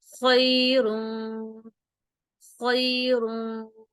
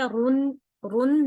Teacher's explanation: ٹھیک ہے، رن، رن نہیں پڑھنا، وہ اظہار ہو جائے گا، تھوڑا سا غنہ کریں گے اور نون کی آواز کو چھپائیں گے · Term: اخفا